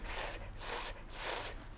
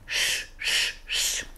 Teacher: С мы говорим на улыбочке, а Ш мы говорим, когда губки вперед.